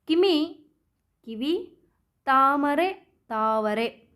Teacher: ಮ ಕಾರ ಇದ್ದಿದ್ದು ವ ಕಾರವಾಗಿ ಪರಿವರ್ತನೆಗೊಂಡಂತಹ ವಿಶೇಷವಾದಂತಹ ಪರಿವರ್ತನೆ